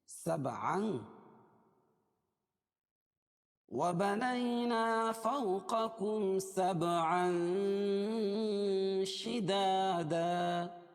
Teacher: تنوین کے بعد اخفاء حقیقی کے 15 حرفوں میں سے شین آ رہی ہے، اس لیے ناک میں آواز کو چھپا کر پڑھیں گے